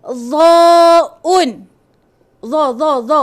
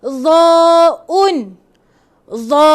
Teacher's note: Hujung lidah di antara gigi.